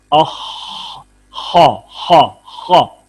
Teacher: ہمس کی وجہ سے سانس جاری ہے، رخوت کی وجہ سے آواز جاری ہے خا میں، اور استعلاء کی وجہ سے یہ پر ہو رہا ہے، موٹا پڑا جا رہا ہے